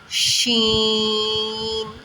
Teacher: شین بھی ادا کرتے ہوئے منہ میں سے سیٹی کی آواز ہے